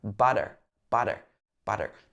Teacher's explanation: it sounds almost like a d sound but lighter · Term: tapped t sound, tapped T sound